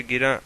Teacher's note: प्रत्येक शब्द का उच्चारण करते समय किसी एक अक्षर पर अधिक बल दिया जाता है, जैसे गिरा में रा पर। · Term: शब्द बलाघात